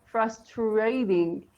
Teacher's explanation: when we have the combination of TR sound in both, British and American English, we say it as che. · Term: slight ch sound